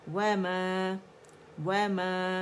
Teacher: وما وما، اور میم کے اندر غنہ جو مد ہے نا، میم کا اپنا فطری ایک کاؤنٹ کا غنہ تو ہم ادا کریں گے، دونوں ہونٹوں کو خشک سے آپس میں ملا کر